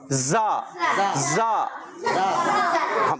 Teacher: زا سیٹی کے ساتھ، زا سختی کے ساتھ نہیں، سیٹی کے ساتھ